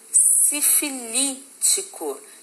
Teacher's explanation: O li é a sílaba mais forte. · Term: proparoxítona